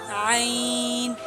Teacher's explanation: حلق کے درمیانی حصے سے ہا اور عین، ان دونوں کا مخرج ایک ہے، یعنی کہ دونوں ایک ہی جگہ سے ادا ہوتے ہیں۔